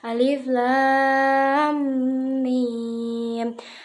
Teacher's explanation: Pada bacaan alif lam mim terdapat hukum bacaan mad lazim mustaqal harfi yang dibaca panjangnya 3 alif atau 6 harokat